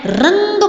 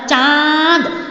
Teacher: रंग बोलते हुए ध्वनि जो थी आपकी नाक से निकली, केवल नाक का प्रयोग हुआ। आपने बोला चांद तो चांद बोल के आपका मुंह भी खुल गया, मुंह का प्रयोग हुआ, साथ में ध्वनि जो थी आपके नाक से निकली। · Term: अनुस्वार